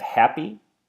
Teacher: So I have happy, I split it into two different noises, I add the stress on the first syllable, the ha